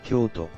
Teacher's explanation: in Kyoto, the To is pronounced with a sharper and shorter intonation, lacking the elongated vowel.